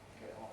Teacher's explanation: T-glottaling, before a vowel, get off and so on, yes in Cockney, yes in estuary, beginning to be heard across a word boundary.